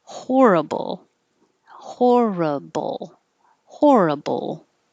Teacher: when you get to the ball hold the tongue in the l position a little longer so we can hear it